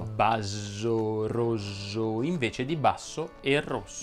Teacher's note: Il più semplice da sistemare ed il primo è confondere la S sorda con la S sonora. Si chiama assordamento.